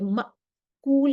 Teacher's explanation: جب میم زبر الف یہ مأکول کہیں گے تو ہماری سانس بند ہو جائے گی، اتنی بلندی اور قوت کے ساتھ مخرج میں آواز ٹھہرے گی کہ سانس ہماری بند ہو جائے گی۔ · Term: جہر